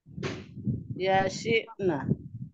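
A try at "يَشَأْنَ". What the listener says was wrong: ইয়াশি হয়ে গেল কিভাবে আবার? ইয়াশা'না, ইয়াশা'না।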